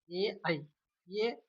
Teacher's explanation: ए ऐ कंठ और तालु दोनों से मिलकर बोले जाते हैं। इसलिए इनको ए को हम कंठ तालु कहते हैं।